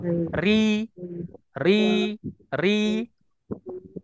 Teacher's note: jadi di pangkalnya itu Ustaz itu tidak terangkat ke langit-langit atas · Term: istifal